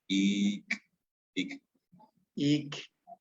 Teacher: Suena mucho como K. Sí, como K glotalizada.